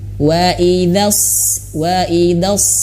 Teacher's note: ketika masuk ke huruf shod pangkal lidah langsung naik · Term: huruf shad